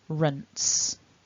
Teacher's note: You're not voicing those last two sounds, so you don't want any vibration in the throat. Otherwise that S will turn into a Z.